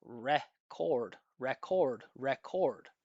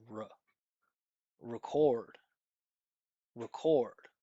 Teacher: it's just a neutral sound that we use in the unstressed syllable to make it so obvious that it's unstressed. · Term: schwa